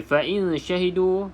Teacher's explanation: Kita ada hukum di sini ikhfa hakiki, maka kita baca dengan dengung tapi samar-samar sahaja